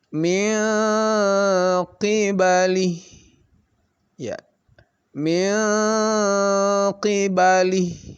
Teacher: Jadi nun itu ketemu dengan 2 huruf ini, qaf dan kaf, maka tidak sama, tidak dekat dia. Jadi nun itu tidak dibaca n tetapi dibaca eng ya. Ng, eng. Nah, karena makhrajnya memang berbeda. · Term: ikhfa ab'ad